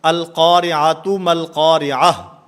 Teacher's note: گول تا یہ وقف کی حالت میں ہا سے بدل جاتی ہے